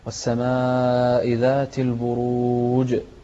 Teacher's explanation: في هذه السورة في كلمة البروج ننتبه إلى القلقلة في رأس الآية